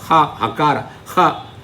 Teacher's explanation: Initially you start with a ha with emphasis, but when you end that pronunciation of the letter hakara, it comes down. The emphasis comes down. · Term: swarita